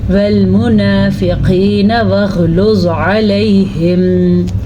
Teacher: والمنافقین واغلظ علیہم، چھوٹا کرنے کا مطلب یہ نہیں ہے کہ آپ یہاں پہ جھٹکا بھی دے دیں، نون کے اوپر جھٹکا نہیں دینا ہے، آپ نے آرام سے پڑھنا ہے